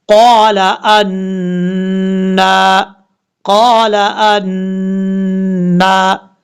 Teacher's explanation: نون کے اوپر شدہ غنہ کریں گے، کھڑا زبر ہے، ایک الف کی مقدار لمبا کریں گے